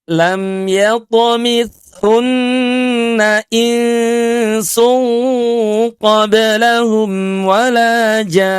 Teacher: Tahan suara kita enam harakat untuk memanjangkan mad dan tahan di ghunahnya selama dua harakat. · Tidak boleh tergesa-gesa, tidak boleh terlalu cepat. Tahan suara kita 6 harokat untuk memanjangkan mad dan tahan di gunnahnya selama 2 harokat. Jadi perbaiki cara membaca mad lazim musaqal kilmi.